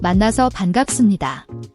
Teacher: At the end of a syllable, it's an unaspirated B sound. Close your lips gently without a strong puff of air, similar to a soft P sound.